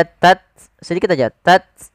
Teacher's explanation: hames itu mengalirnya nafas, tidak terlalu banyak, tidak tats tidak, tapi dia tat sedikit aja, tat bukan tats tidak.